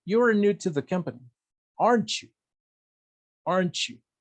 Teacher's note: El you va a ser con entonación descendente. · Si estoy casi seguro de que you're new to the company, de que eres nuevo en la compañía, mi entonación va a ser descendiente, porque estoy casi seguro.